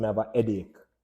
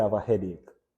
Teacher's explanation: a Nuance about Jamaican CR is that in many instances especially the beginning of a word we drop our H's